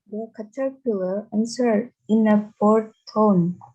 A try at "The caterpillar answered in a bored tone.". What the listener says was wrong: The caterpillar answered, bacanya W-nya silent W. So you don't have to read the W. You don't have to say answered, no. Answered in a bored tone.